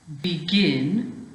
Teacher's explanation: you've got to stress on gin at the end